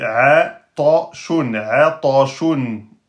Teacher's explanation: la lettre Ta est une lettre emphatique. Donc on la prononce de façon grave. Donc on ne doit pas dire Ate.